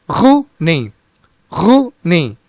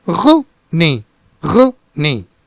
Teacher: This is with a strong glottal sound and the entire word is very short and abrupt.